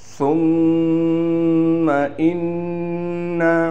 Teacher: میم پر تشدید ہونے کی وجہ سے یہاں بھی غنہ کر رہے ہیں